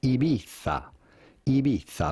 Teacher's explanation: The Z in Spanish is pronounced with your tongue between your teeth, so a little bit like the English the.